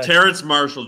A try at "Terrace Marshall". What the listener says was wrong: Terrace It's Terrace. There's no N in there.